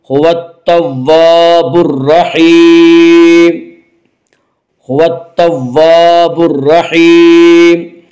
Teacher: الف لام اگر حروف شمسی کی شروع میں آئیں تو الف اور لام کو نہ پڑھا جائے گا بلکہ بعد والے حرف سے ملا کر پڑھیں گے۔ تا یا حروف شمسی میں سے ہے، تا سے پہلے الف اور لام ہے، اس لیے الف اور لام کو نہ پڑھیں گے بلکہ بعد والے حرف سے ملا کر پڑھیں گے۔